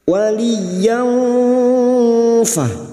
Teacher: Ini juga yang disebut dengan ikhfa ausat. Kita samarkan bunyi fathah tanwin yang fa, dan bibir kita siap-siap untuk membunyikan huruf fa. · Kita samarkan bunyi fathah tanwin dan mendengung selama 3 harakat. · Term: ikhfa hakiki